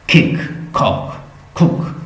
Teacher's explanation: तो ये sound soft palate की तरफ आपको फील होगा कि मेरी सॉफ्ट पैलेट को टच कर रही है